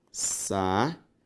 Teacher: Perceba que a sílaba tônica também é a penúltima, ou seja, uma palavra paroxítona.